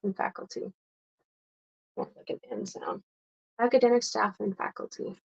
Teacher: academic staff and then when we say and we may not we might pronounce the d but we might not